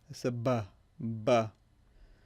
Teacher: It's not involving the tongue, it's not involving the teeth, it's just involving the two lips. That's where the sound is formed.